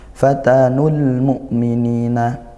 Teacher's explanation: hamzah sukun diperhatikan ditekan ya tidak ngalir. Kemudian ni mad thobi'i.